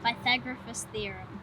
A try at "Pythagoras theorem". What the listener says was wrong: Doesn't have an F in it.